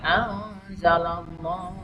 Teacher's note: disamarkan nun mati bertemu za, namanya ikhfa